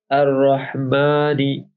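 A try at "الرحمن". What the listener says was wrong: हाँ देखो, ये जहाँ पे जाता है अर्रहमान, है ना, तो ये जो है, हाँ जो आ है वो नहीं होना चाहिए नाक से, है ना।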